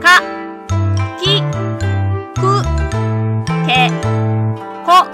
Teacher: The K sound is a velar, voiceless, stop consonant.